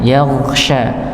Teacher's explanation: Yaghsha ini tertahan, ya, atau dia dipantulkan yaghsha tapi dialirkan, ditebalkan karena dia termasuk huruf yang tebal dan dialirkan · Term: huruf gha